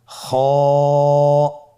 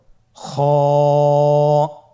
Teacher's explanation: খ হরফটির মাখরাজ হলো কন্ঠনালীর শেষ ভাগ হতে উচ্চারণ করতে হয়।